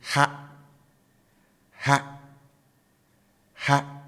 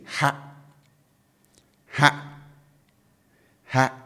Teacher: I raise my tone, right? So the tone is up.